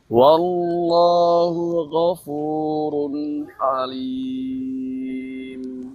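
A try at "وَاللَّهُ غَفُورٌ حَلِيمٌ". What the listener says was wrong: Ayo huruf ginya jangan ke G.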